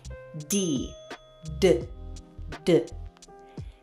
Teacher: sound more like a quick d d D this happens because our tongue laps quickly against the roof of our mouth this change helps us